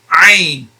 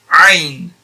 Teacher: From the middle part of the throat.